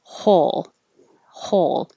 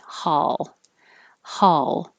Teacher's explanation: for most American general dialects, it's going to sound like ah, like hot, with the jaw very low and the lips straight, ha. However, East Coast dialects will use the aw, so the lips will be rounded.